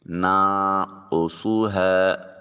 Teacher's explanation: نون ساکن کے بعد قاف حرف اخفا ہے تو نون کو اپنے مخرج میں چھپا کر ادا کریں گے، اس کو نان کو سوہا نہیں پڑھیں گے، نانقصها۔